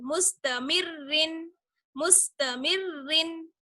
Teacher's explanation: जिस रॉ पर दो जेर हो तो वो रॉ बारीक होगी